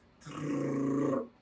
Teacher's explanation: a vibração da língua atrás dos dentes